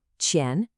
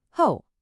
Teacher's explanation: In front goes up, qian. Behind goes down, ho.